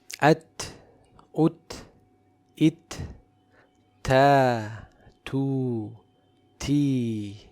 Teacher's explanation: Ta is one of the two letters that has shiddah and hams. So the sound does not flow but it is characterized with hams or release of breath. Also it is a light letter.